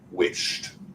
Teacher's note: There's no vibration with our SH sound. Therefore, we have to pronounce that ED as a T sound.